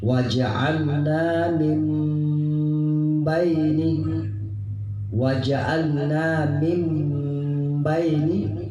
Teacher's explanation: Kemudian selanjutnya waja'alna min baini, nun mati bertemu dengan huruf ba, waja'alna min baini, waja'alna min baini, nun sukun bertemu dengan ba, ini disebut dengan iqlab. Jadi posisi mulut pada saat itu dalam keadaan tertutup berada pada huruf nun dengan ba